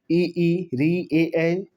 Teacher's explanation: अग्र भाग जो जीभ के अगले भाग से ऊपर नीचे होने पर इसका उच्चारण होता है। अगला भाग उठता है।